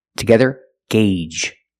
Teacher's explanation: The first G is a hard G sound, followed by the long A, gay, and the second G is the J sound, like in juice and jump.